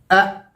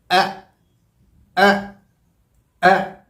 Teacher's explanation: ये आवाज़ अदा होती है हमारे हलक़ के निचले हिस्से से, बॉटम ऑफ द थ्रोट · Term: हमज़ा की आवाज़